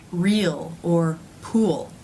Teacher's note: It's very similar to the as in pull sound. So the tip of the tongue has pulled back a little bit. It's not touching anything, The tongue is raised somewhat towards the middle, and the lips round a little bit, before the tip of the tongue moves up to make the L sound. · where the tip of the tongue is forward for the vowel, re, it has to pull back, re, to make that dark L sound. If you leave it out, real, it does not sound correct.